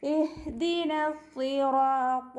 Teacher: സ്വാദിന് ശബ്ദമുണ്ട്, അപ്പോൾ കുറച്ച് കനം കൊടുത്തിട്ട് ഉച്ചരിക്കുക. റ ഉയർത്തി ഉച്ചരിക്കണം. · നൂനിൻ്റെ കൂടെയുള്ള അലിഫ് മദ്ദിനെ നമ്മൾ കട്ട് ചെയ്യും കൂട്ടി ഓതുമ്പോൾ.